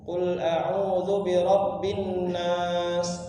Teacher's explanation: Nah, ketika kita membaca bi rabbin nas, kalau kita hitung itu sampai 3 harokat dengungnya. Kalau cuma 2 dia maka kurang.